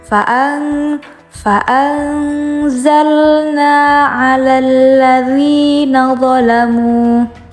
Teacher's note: Ketika nun mati bertemu dengan huruf za, itu maka hukumnya dibaca ikhfa, yang artinya samar. Fa'anzalna, disamar-samar seperti suara eng.